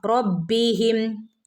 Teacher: റബ്ബിഹിം ബിന് ശ്രദ്ധയുണ്ട് ഒന്ന് കട്ടികൂട്ടി ഓതി കൊടുക്കുക